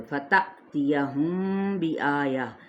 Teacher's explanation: میم ساکن کے بعد با آ رہا ہے، تو یہاں پہ اخفاء شفوی · یہاں پہ حمزہ ساکنہ پر جھٹکا دیا جاتا ہے